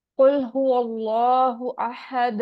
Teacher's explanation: काफ ऊंचा है, मोटा लफ्ज है, इसको हमने मोटा ही पढ़ना है।